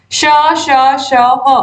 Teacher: इनको बोलते समय मुख से हवा रगड़ खाकर बाहर निकलती है या गर्म होकर बाहर निकलती है। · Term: उष्ण व्यंजन